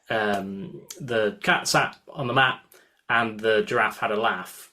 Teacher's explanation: words like trap and words like bath, which in any Northern English accent is going to be pronounced with the same sound. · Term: Yorkshire accent